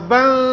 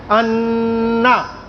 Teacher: اخفا جب ہم پڑھتے ہیں با نون زبر بن تو زبان منہ میں کہیں بھی ٹچ نہیں ہو رہی ہوتی، اپنی جگہ پر ایسے بالکل سیدھی رہے گی.